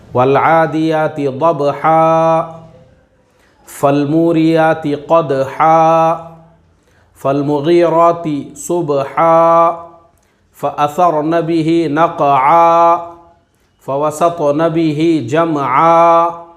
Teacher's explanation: دو زبر کی تنوین تھی تو اس کو ہم نے الف مدہ سے بدل دیا